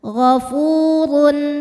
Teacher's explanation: huruf ro dibunyikan secara tafkhim karena berharakat dhamah tanwin